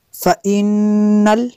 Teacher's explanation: نون مشدد ہے غنہ کریں گے